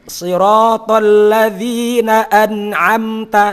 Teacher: Artinya walaupun dia secara makna adalah terang karena bacaan idhar, tapi wajib tetap ada unsur mendengungnya. Namun naqs minim. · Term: gunnah naqs